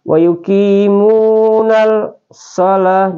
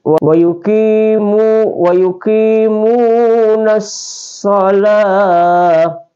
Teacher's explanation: alif lam syamsiah ini dia sebenarnya ada tertulis tapi ditiadakan dalam bacaannya. Jadi tidak boleh bilang wa yuqimunal shalah, jadi langsung wa yuqimunas shalah, ya.